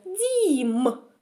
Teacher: перший звук у нас буде дь м'який а звук м буде твердий